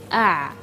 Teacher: tidak apa-apa kita memegang bagian tengah-tengah dari tenggorokan dimana di situ ketika melafalkan huruf Ain kita akan merasa getaran pita suara kita